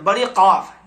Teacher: और बड़ी कौफ, जड़ जबान तालू से मिलकर, बड़ी कौफ, जड़ जबान, जहाँ जड़ जबान का और तालू ऊपर से मिलकर बड़ी कौफ